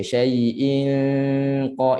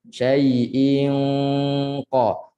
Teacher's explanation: Ada sentuhan yang lembut, talamus, sentuhan yang lembut pangkal lidah dengan langit. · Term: dengung qaf